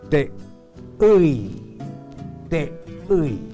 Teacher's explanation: Después de la sílaba T, él puso la vocal U acentuada, seguida por la vocal I no acentuada o átono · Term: gutural contracta